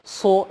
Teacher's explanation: su itu agak monyong ke depan karena dia adalah huruf tebal, su, sementara huruf tipis tidak terlalu monyong, sekedarnya saja su.